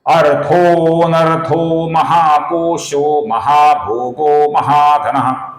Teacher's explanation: महाकोशः का जो विसर्ग है, इसके आगे महाभोगः का म आया हुआ है। इस कारण से इसका महाकोशो हुआ है।